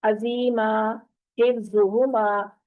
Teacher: जो सीटी की आवाज आ रही है, इसका मतलब हम सख्ती से अदा कर रहे हैं और मखरज से अदा नहीं कर रहे